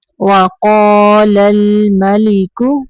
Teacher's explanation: وقال الملک، قاف کو اوپر پڑھیں گے، قاف کے آگے الف ہے تو قاف کو تھوڑا لمبا کرنا ہے 2 سیکنڈ تک۔ وقال، لام کو حرکت نہیں دینی، لل نہیں پڑھنا۔